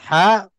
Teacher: Ha makhrajnya di tengah-tengah halqun